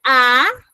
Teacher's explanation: Si ustedes pronuncian la A, los labios se separan, por lo tanto es vocal abierta.